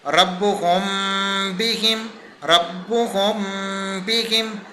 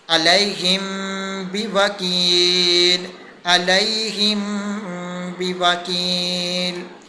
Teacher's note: اب ہم نے میم ساکن کے بعد حرف با کو دیکھا، جس کی وجہ سے ہم نے غنہ کیا اور چھپا کر کیا، اور یہاں پر ہم نے اخفاء شفوی کا قاعدہ استعمال کیا، اس لیے ہم نے غنہ بھی کیا اور تھوڑا سا آواز کو کھینچا بھی ہے